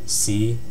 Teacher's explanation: this one's a low pitch rising tone. It's similar to tone 2, but it's at an even deeper pitch. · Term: fifth tone